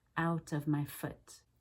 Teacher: I use less oo in the second half of the ow diphthong.